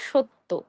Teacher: আমরা সত্য না বলে ওকার দিয়ে শুরুতে ওকার দিয়ে সত্য উচ্চারণ করব